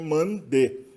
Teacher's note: tu vê que aí a forma do sufixo posp posicional T muda para D no caso de mande porque n é uma consoante sonora Então sonoriza se o t para d